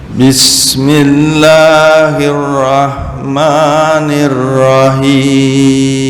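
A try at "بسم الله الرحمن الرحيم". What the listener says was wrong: Nah, untuk ha itu ada suara Bismillahirrahmanirrahim. Him, bukan nirrahim. Tengah tenggorokannya belum tergambar. Ada ha, ain itu di tengah tenggorokan.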